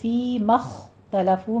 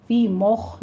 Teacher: فی مختلفو میں، فی میں یا مدہ ہے، مخ میں آپ نے دھیان رکھنا ہے، خو کو پر کرنا ہے، پیچھے میم کو باریک ہی رکھیں گے، میم کو آپ نے پر نہیں کرنا۔